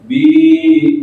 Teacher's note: bibir ketemu bibir atas bawah